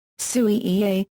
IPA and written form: su͍ːʑi (sūji)